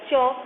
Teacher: च अर्थात जीवा के नीचे से आ रहा है, तालु से आ रहा है